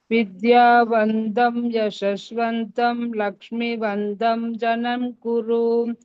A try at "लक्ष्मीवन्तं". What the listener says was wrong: लक्ष्मी मी with dirgha.